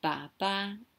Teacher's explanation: So baba, low to high, baba is dad.